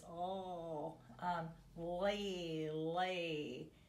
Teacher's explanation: American English speaking people generally engage the back of the tongue on L